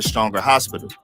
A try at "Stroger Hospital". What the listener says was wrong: He said Stronger. It's Stroger Hospital, not Stronger. But yeah, if you're not from there, you might pronounce it, but it's Strogers.